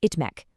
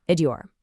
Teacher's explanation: For a very small group of common verbs that end in t, that t sound softens into a d before you add the -iyor suffix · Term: consonant softening